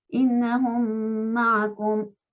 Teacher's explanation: todo como si fuera una sola palabra, y recordemos insistir, ponerle shadda a la mim de la segunda palabra. En este ejemplo ya lo tenemos dibujado, pero si no tuviéramos la shadda puesta hay que colocarla. · Termina con mim la primera palabra y la mim saken, y la segunda empieza con una mim. Así que también lo leemos como si fuera una sola cosa. Innahum ma'akum se debería leer innahum ma'akum, todo como si fuera una sola palabra, y recordemos insistir, ponerle shadda a la mim de la segunda palabra. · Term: idgham